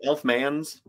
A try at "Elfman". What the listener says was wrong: It's the plural. Elfman.